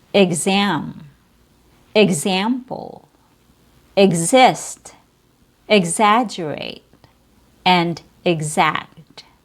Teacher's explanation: Zam is stressed. Egg is not. · E X is pronounced with a short I sound plus G plus Z